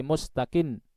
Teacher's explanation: dibaca dengan agak ditekan di akhirnya